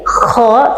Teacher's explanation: Kha itu harus keluar suara dan nafas.